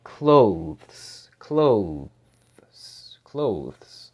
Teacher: when you say this the th is going to be massively reduced because if you really say this at a normal speaking speed · the TH is gonna be massively reduced